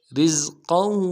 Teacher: را کو زا کے ساتھ ملانا ہے، زا میں سیٹی نکالیں گے، قاف کو موٹا ادا کریں گے